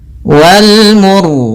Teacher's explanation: ro-nya di sini kita baca dengan ro tebal disebabkan karena sebelum huruf ro yang disukunkan ada huruf yang dhammah.